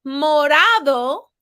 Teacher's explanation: it is a flap R meaning my tongue touches the roof of my mouth one time